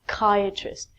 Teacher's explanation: we take out the P and it's like kya tryst we change the CH 2 K